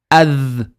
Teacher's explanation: So we're going to say a and then we go jump onto the dal straight away. Hold it with the vibration. Ad. And I'm exaggerating for learning purposes, but as we go along, we just say ad quickly. · So the initial sound of dhal is a vibrating sound. The tip of the tongue comes out and we vibrate.